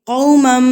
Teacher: ناک میں آواز کو لے کے جایا جاتا ہے 1 سیکنڈ کے لیے، اور یا ایک حرکت کے برابر آپ نے غنہ کرنا ہوتا ہے، ناک میں آواز کو لے کے جانا ہوتا ہے.